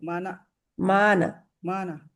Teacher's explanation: وهارون وسليمان مانا مانا مانا نا نہیں ہے مانا مانا مانا ما تو لمبا کریں گے نون کو نہیں کھینچیں گے